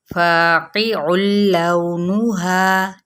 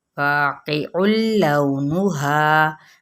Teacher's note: عین تنوین پیش ہے اور آگے لام آ رہا ہے تنوین پیش کے پاس، یعنی آئے لام یا را میں سے، تو پھر ہم نے کیا کرنا ہے، اس کو بغیر غننے کے آگے بڑھ جانا ہے